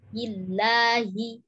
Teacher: hi-nya didorong. Karena ha pangkal tenggorokan